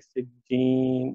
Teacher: نون پہ وقف ہوگا، مد عارض بنے گا، 4 حرکت تک یہاں جائیں گے